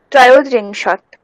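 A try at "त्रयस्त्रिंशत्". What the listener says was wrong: ত্রয়স ত্রিংশত। হ্যাঁ, ওকার দেবো না, ত্রয়স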